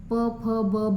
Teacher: ओष्ठवर्णमध्ये ओठाचा उपयोग होतो